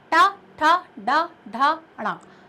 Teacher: ट वर्ग का उच्चारण स्थल मूर्धा है, यानी जब अपनी जो जिह्वा है, जो टंग है, उसके सबसे आगे वाले भाग पर थोड़ा सा प्रेशर आएगा।